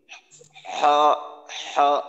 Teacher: গলা চাপ দিয়ে ধরে যে জায়গাটায় চাপ অনুভূত হয় ওই জায়গা থেকে উচ্চারণ করার চেষ্টা